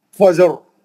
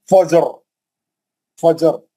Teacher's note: जिम पे जो है खलखला करेंगे, रा को मोटा पड़ेंगे